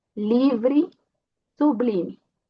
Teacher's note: Se eu tenho uma E como uma átona no final, a pronúncia vai ser I